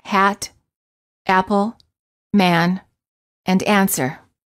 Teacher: the lips are open not rounded and the tongue is in the lowest position of all the front vowels the tongue is flat on the floor of the mouth